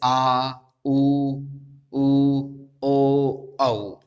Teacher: पश्च स्वर वो स्वर हैं जो जिह्वा के पिछले भाग के द्वारा, पश्च भाग अर्थात पिछले भाग के द्वारा बोले जाते हैं।